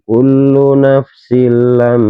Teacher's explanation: Apabila ada fathatain atau tanwin bertemu dengan huruf lam, maka dinamakan hukum bacaan idgham bilahunah, memasukkan dengan tidak mendengung.